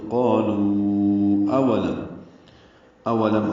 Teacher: تو قالوا اولم حمزہ واو جلدی سے پڑھیں گے اور میم ساکن پہ اظہار ہوگا لم میں